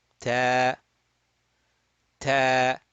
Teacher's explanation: And if I add an alif, okay, so this causes the ta fatha to get stretched because this is alif mad. It is stretching the fatha and it will be stretched for 2 beats.